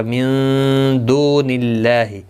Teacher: نون ساکن کے بعد حروف اخفا کا دال آیا ہے، اخفا حقیقی ہوگا